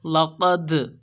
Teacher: لام زبر لا، قاف دال زبر قد، لقد، تو یہاں پر قلقلہ ہوگا۔ دال کے اوپر ساکن آیا تو یہاں پر قلقلہ ہوگا